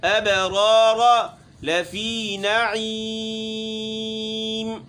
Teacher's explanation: با ہے ساکن ہے، اس کے اوپر چونکہ حروف قلقلہ میں شامل ہے، یہاں قلقلہ کریں گے اور اچھا خاصا.